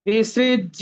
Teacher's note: আমরা কিন্তু বর্গীয় জ ফলা মনে করে ডাবল জ বলবো না, বিসৃজ্য, ইয়র উচ্চারণটা আমরা এখানে স্পষ্ট ভাবে করার চেষ্টা করব